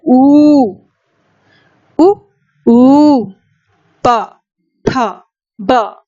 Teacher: ऊ और पवर्ग का उच्चारण स्थान ओष्ठ होता है।